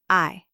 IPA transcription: ai